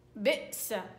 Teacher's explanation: قطع نفس، قطع هوى، قطع صوت في الهمزة الساكن